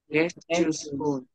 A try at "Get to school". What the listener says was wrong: No S. Get to school.